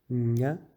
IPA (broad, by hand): ɲ